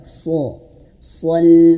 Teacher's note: Min aqsal so, tebalkan so, sol. Nah, jadi sodnya tebal, so, al itu tipis, huruf lam itu tipis